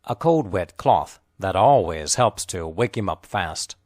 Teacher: The important content words are cold and cloth. The unstressed words are a and wet. The words cold and wet are linked together.